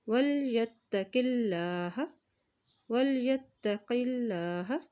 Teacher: अल्लाह के नाम से पहले ज़ेर आ गया है तो अल्लाह का नाम यहाँ बारीक अदा किया जाएगा।